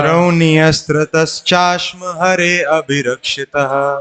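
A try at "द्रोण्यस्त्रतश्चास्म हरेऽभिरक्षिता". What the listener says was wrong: देखिए हरे आ नहीं बोल सकते, उसके बाद वो एस लगा है ना, तो आ को साइलेंट करना होगा। द्रोण्यस्त्रतश्चास्म हरेभिरक्षिताः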